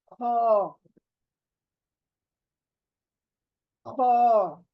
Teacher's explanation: ख नहीं, ख, देखें, ख, ख, यानी हॉलो प्लेस। हलक में से ही पढ़ेंगे, लेकिन कोई चीज टच नहीं करेगी हलक के अंदर। हॉलो चीज से बाहर आना है इसको, यानी खाली हलक के खाली हिस्से से इस लेटर को बाहर आना है।